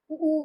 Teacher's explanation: हमारे ओठ जो हैं वो गोल हो रहे हैं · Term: ओष्ठ